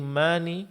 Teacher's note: mad thabi'i dipanjangkan dua harakat jangan dilebihkan